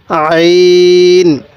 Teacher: আর উচ্চারণের সময়, আইনটা উচ্চারণের সময় একটু গলার মধ্যে চাপ দিয়ে পড়লে আইনটা সহি উচ্চারণ হবে।